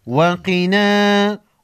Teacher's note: قاف کو موٹا پڑھیں گے، حروف مستعلیہ میں سے ہے۔